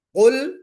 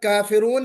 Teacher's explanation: قاف نکالا ہم نے منہ بھر کے، پھر اس کے بعد کافرون جب کہا تو منہ بھر کے نہیں پڑھا بلکہ کافرون، اس کو باریک پڑھا نا، کافرون، منہ بھر کے نہیں پڑھا ہم نے کاف کو۔